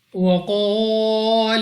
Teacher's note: قاف، مستعلیہ میں سے ہے، موٹا پڑھنا ہے منہ اور آواز کو کھول کر. اس کے ساتھ الف سے پہلے زبر الف مدہ ہے، 2 سیکنڈ تک لمبا کریں گے.